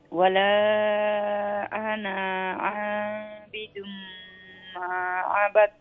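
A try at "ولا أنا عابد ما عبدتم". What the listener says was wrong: জি ওজনে ওয়ালার বাদে যে আনা আইছে ই নুনের বাদে যে আলিফ ইটার স্ট্রেচ করা হইতো না ইটা লম্বা হইতো না ইটা লিগে সাইলেন্ট ওয়ালা আনা আ আনা আ আনা নুন ইটা বাড়তি থাকবো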